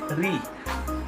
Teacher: জিহ্বা মূর্ধাতে স্পর্শ করে উচ্চারণ করা হচ্ছে রি